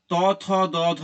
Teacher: এই বর্ণগুলি উচ্চারণের সময় শ্বাসবায়ু দাঁতে বাঁধা পাচ্ছে তাই এদের নাম হয়ে গেল দন্ত বর্ণ